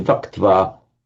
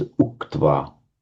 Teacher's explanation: Now, by a survival from the Vedic accentuation system, it was accented on the final syllable, on the twa, and you very often find that where you have a v followed by an accented syllable after it, the va just becomes an u